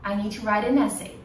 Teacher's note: Eu tenho um som de vogal. Então é necessário fazer o flap T.